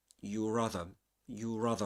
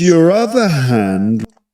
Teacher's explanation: your rather. It's um a r sound not as strong as at the beginning of a word